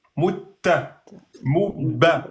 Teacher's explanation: C'est juste que la première, tu la bloques en soukoun et la deuxième, tu la lâches avec la voyelle. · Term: dédoublement de lettres